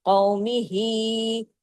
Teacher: ہاں کھڑا زیر ہی دو حرکات کھینچتا ہے